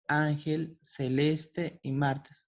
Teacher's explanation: van a ser palabras que tienen la sílaba tónica en la penúltima posición